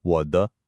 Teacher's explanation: When a third tone is followed by a neutral tone, we only pronounce the first half, the dipping part of that third tone. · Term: just the dip